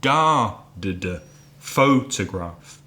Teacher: 3 syllables. First syllable stressed